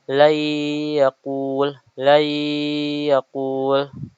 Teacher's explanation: Apabila nun sukun atau tanwin bertemu dengan salah satu huruf ya, na, mim, dan juga wau, cara membacanya diidgamkan atau dimasukkan dengan ee ke dalam huruf berikutnya dengan tempo ghunah yang dipanjangkan sebanyak dua harakat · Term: idgham bighunah